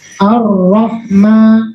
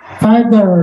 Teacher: Orang Arab rohnya harus ada getarannya, roh, jangan seperti orang Inggris, itu salah. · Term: takrir